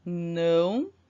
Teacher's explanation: nós temos o sinal de som nasal no a né tornando a vogal com o som anasalado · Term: ditongo nasal